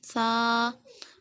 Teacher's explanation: اس کو نرمی کے ساتھ پڑھنا ہے، زبان دانتوں کے کنارے پہ لگا کے